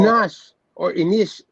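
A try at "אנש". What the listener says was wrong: There's no E or I. It has to be with an A. Well, Anash is a word that we use for men, not man. You say a Nash when you say men. You say Yish when you say man, and you say Adam when you say man.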